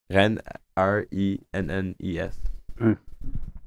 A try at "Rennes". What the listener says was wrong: You don't pronounce the S.